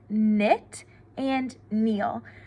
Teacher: a k n k in says n when it says n the K does not say a sound it's just the N that we hear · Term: n Sound